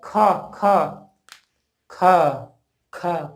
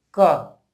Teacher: जिन व्यंजन वर्णों के उच्चारण में अधिक वायु निकले, अधिक वायु मुंह से निकले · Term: महाप्राण